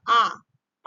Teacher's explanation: आ आ जो आपका पीछे से बोला जा रहा है तो आ हो जाएगा आपका पश्च स्वर